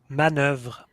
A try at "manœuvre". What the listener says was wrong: They are pronouncing the second syllable more longer, but this time it's okay.